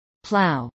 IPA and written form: plˈaʊ (plow)